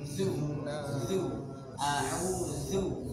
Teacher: Jadi dia keluarnya dari ujung lidah dengan dua gigi seri. Jadi seakan-akan digigit.